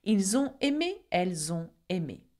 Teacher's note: Okay, the sounds comes from the fact that il ends with an S and on begins with vowel. So we make what we call the liaison.